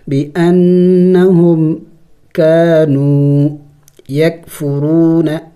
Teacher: نون مشدد ہے غنہ کریں گے